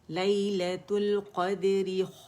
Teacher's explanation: ری کھینچیں گے نہیں، مد نہیں بنائیں گے، جسٹ ون کاؤنٹ